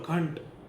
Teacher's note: તમે શબ્દ બોલો ઘંટ તેમાં ણ બોલાય છે